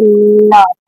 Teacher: आप ल बोलते हैं तो दोनों साइड से ऊपर जीभ जब तालु में सटती है तो दोनों साइड से हवा पास होती है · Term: पार्श्व व्यंजन